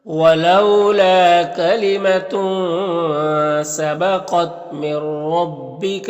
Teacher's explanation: قاف حروف مستعلیہ میں سے ہے، یہاں پر نون ساکن کے بعد را ہے حروف یرملون میں سے، تو نون کو را سے ملا کر بغیر غنہ کے پڑھیں گے، اس کو ادغام تام کہتے ہیں۔